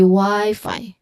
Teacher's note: both Y and Fi should be pronounced with a long I sound or a diphthong I